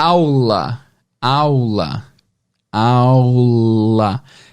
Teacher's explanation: você reparou que a ponta da língua tá no céu da boca né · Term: som de L